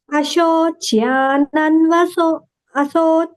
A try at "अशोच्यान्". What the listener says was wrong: Not aso. Not aso. Asho.